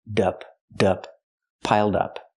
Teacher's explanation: pronounce it like one word not piled up but piled up connect the D with the next word